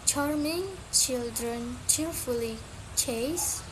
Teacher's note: It is a voiceless post-alveolar affricate.